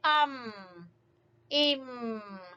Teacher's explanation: دونوں ہونٹوں کی خشکی والے حصے کو ملانے سے میم ادا ہوگا